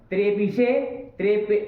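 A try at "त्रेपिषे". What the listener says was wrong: ईट करो तो शत्व करना, बेवकूफ की तरह मत करना। त्रेपिशे और त्रेप से तब दंत ये सब अपने सब समझा करो, ये सब बताने वाली चीजें नहीं होती।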